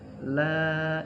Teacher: La itu panjang, itu mad tabi'i karena harokat fathahnya berdiri